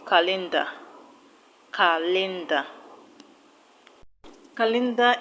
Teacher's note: What I mean is that calendar is a noun, so the stress will go to the first syllable.